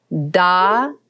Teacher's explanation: the tip of the tongue hits the roof of the mouth on da